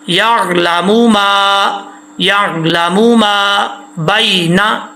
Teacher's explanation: بینا، اکثر لوگ پڑھتے ہیں یعلم ما بینا، ایسا نہیں پڑھنا، میم کو لمبا بالکل بھی نہیں کرنا ، میم پیش مو بس، یعلم ما یعلم ما بینا، بینا